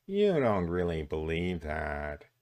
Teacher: It sounded a little bit like that voice at the beginning of Mel Gibson's Passion of the Christ, that little kind of androgynous, kind of little sibilant voice